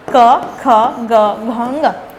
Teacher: क वर्ग के जितने भी वर्ण हैं उसको उच्चारण करते समय आपको कंठ से निकलती है वो ध्वनि, इसलिए उसको हम कंठ्य वर्ण कहते हैं